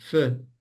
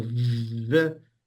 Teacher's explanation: So vv and f the mouth position is the same but one gets the larynx involved in in in vibrating and so the f is voiceless and the v is voiced